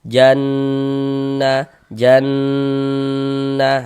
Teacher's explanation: Kita ghunahkan di bagian jannya itu suaranya itu kita tahan kita panjangkan sejenak. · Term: ghunah musyaddadah, gunnah musyaddadah